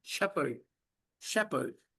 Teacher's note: H is silent. And R is also silent.